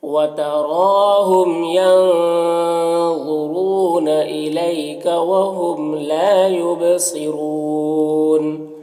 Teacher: الیکا میں یا لینے سے نرم آواز کے ساتھ جلد پڑھیں گے